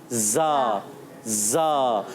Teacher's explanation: आपने भी अच्छे अंदाज से जा पढ़ना है, सीटी के साथ